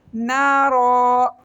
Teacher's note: Block number 1 میں دیکھیے مثلہم کمثل الذی استوقد نارا. نون کے ساتھ الف مدہ ہے، 1 سیکنڈ کی لمبا کریں گے. را کے اوپر وقف کریں گے اور اس کو 1 سیکنڈ لمبا کریں گے اور موٹا کر کے پڑھیں گے.